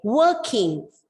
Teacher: the R is silent because it is followed by a consonant sound